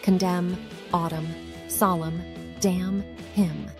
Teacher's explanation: Did you notice how the N is not pronounced in any of these words? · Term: silent N